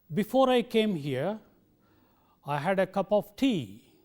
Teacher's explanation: tone conveys the incompletion of meaning what we do generally is we use a falling tone on the main clause and a rising tone on the subordinate clause